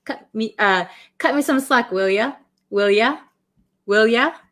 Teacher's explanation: So will ya, this you becomes ya